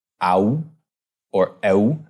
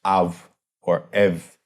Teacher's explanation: historically in Greek, that was an au or eu sound, but around this time, it came to be pronounced as av or ev